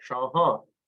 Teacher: you have the long nasal A